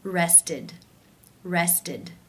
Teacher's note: the final sound of the infinitive form of the verb is the t t sound therefore it is case three where the e d is pronounced as the e as in sit with the d sound